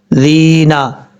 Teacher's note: یہ زال جو ہے بغیر سیٹی کے ساتھ پڑھا جائے گا، اور زال کے بعد جو یا ہے یہ یا مدہ ہے۔